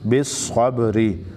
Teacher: صاد حروف مستعلیه کې دي، پیړ به ویل کېږي، را باندې زیر دی، باریک نری به ویل کېږي